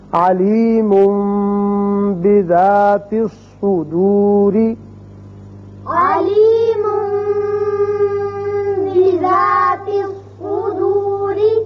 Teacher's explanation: جب بھی نون ساکن یا تنوین کے بعد حرف با آ جائے تو وہاں اقلاب کی وجہ سے ایک الف کے برابر آواز ناک کے بانسے میں ٹھہرتی ہے